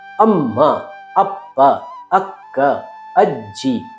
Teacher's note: ಮ ಎನ್ನುವಂತಹ ಅಕ್ಷರವನ್ನ ಉಚ್ಚರಿಸುವಂತಹ ತುಟಿಗಳನ್ನ ಇನ್ನೂ ಸ್ವಲ್ಪ ಸಮಯ ಒತ್ತಿ ಹೇಳಿದಾಗ ಅಮ್ಮ ಎಂದಾಗುತ್ತದೆ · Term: ಒತ್ತಕ್ಷರ